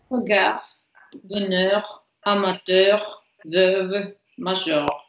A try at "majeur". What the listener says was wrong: Major, окей, замечательно.